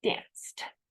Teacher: Actually, the C, E makes a S sound. The last sound is actually S, okay? And that's a voiceless consonant, dance. So we add a D, danced.